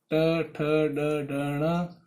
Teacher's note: कुल मिलाकर के इन सभी का उच्चारण स्थान मूर्धा से होता है। इन कारण इन्हें मूर्धन्य वर्ण भी कहते हैं।